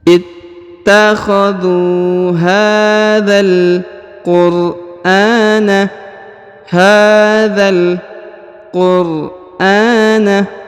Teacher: Huruf dha langsung masuk ke huruf lam yang ini ya, langsung disambung ya, langsung disambung ke huruf lam.